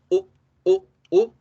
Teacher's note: Con la U corta hacemos la U tal cual la hacemos en español, U, solamente que la hacemos más corta de lo normal, U. No existe una regla fonética para decir cuando ustedes vean tal palabra va esta vocal, pero sí algo que les digo es casi nunca que ustedes vean una palabra escrita con U va a sonar con U.